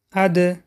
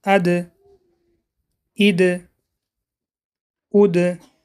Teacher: نوک زبان به ریشه دندانهای بالا می رسد و در وقت با سکون بودن صفت قلقله را دارد.